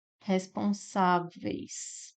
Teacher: O E é vogal e o I é semivogal. Então, eu tenho do forte para o fraco, decrescente, é o contrário. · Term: ditongo decrescente